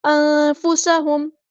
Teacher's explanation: سین کی سیٹی ہم نے واضح کرنی ہے